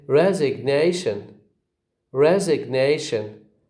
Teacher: we say res with a secondary stress but the bigger stress is ney resignation